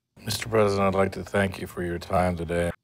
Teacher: the s in president is pronounced as a z Zed sound with voice added not an S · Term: Z sound